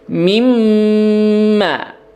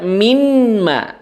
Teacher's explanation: huruf nun sukunnya dileburkan ke dalam huruf mim, kemudian ditahan 3 ketukan karena ada gunnahnya · Ya, jangan dibaca minma. Ya, nunnya jangan diperjelas. Ya, karena bukan izhar di sini, tapi idgham. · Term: idgham bi gunnah